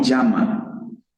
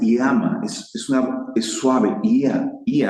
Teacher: Utilizamos la Y para transliterar un diptongo, un sonido suave, y se pronuncia ia, iama, no llama